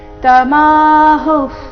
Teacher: ವಿಸರ್ಗದ ಉಚ್ಚಾರಣೆ ಅರ್ಧ ಪ ರೀತಿ ಮುಂದಿನ ಶಬ್ದ ಪ ದಿಂದ ಶುರುವಾದ ಕಾರಣ